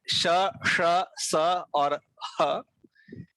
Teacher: इनमें बिल्कुल भी स्पर्श नहीं होता जीभ और मुख के अलग अलग भागों के साथ, लेकिन पास से गुजरना होता है, लेकिन स्पर्श नहीं होता, गैप रहता है।